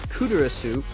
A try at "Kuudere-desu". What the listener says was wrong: I think you missed a couple syllables the first time you said it.